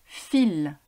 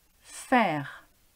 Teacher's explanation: un son sourd les cordes vocales ne vibre pas